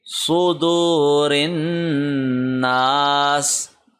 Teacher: را کو نون سے ملائیں گے، نون پہ غنہ کریں گے، نا کو ایک سیکنڈ لمبا کریں گے